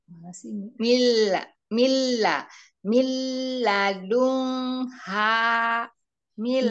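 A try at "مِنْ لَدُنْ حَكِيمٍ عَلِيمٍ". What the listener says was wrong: Dunnya jelas umi, nun sukunnya jelas. Dibaca dun. itu hukumnya izhar ya, bukan ikhfa ya.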